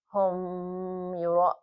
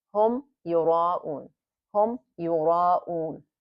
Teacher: We're about to do idgham. So we have to be careful not to hold the meme long at all. I mean, as you read it, you just let it go. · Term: idhar shafawi